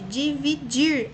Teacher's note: E a mais forte, dividir. A última é a mais forte, portanto, ela é oxítona.